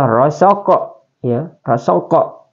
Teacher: qalqalah sugrah, sebab huruf qalqalah itu kaf sukun asli